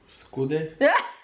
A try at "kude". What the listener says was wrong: Not skude. Not skude, it's a K. K-O-O. Kude.